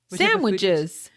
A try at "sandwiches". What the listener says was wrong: You called them sandwiches. I didn't hear the D. Sandwiches. Sounded like you said sandwiches.